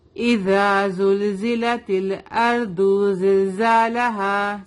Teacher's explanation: زا کو ایک الف کے برابر کھینچ کے پڑھیں گے